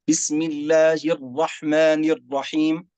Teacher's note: راء واحدة فقط، حركة واحدة، لا نأتي بصفة التكرير فيها